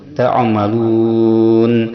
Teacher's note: ada mad bertemu dengan huruf arid lisukun, yaitu huruf yang baru mati karena waqaf, yaitu huruf nun. Ta'amalun, panjangnya 2 sampai 6 harakat. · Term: mad arid lisukun